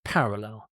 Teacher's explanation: So stress on the first syllable, parallel.